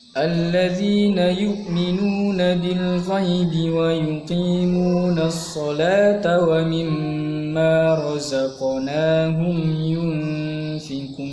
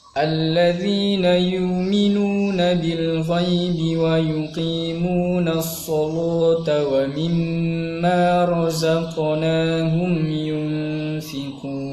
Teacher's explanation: Ada perbedaan bacaan ketika yu'minun menjadi yuminun dan as-salah menjadi as-saluh dalam riwayat Warosh.